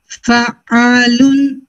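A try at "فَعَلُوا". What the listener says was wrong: जैसे फ़ालुन फ़ालुन फ़ालुन बेटर है. थोड़ा सा और अगर आप उसको मतलब फ्लुएंट करना चाहो ना तो थोड़ा सा और कर सकते हो. फ़ालुन मतलब जर्क में नहीं लेके जाना उसको, पहले फ्लो में ले.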